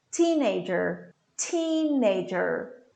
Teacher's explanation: the stress falls in teen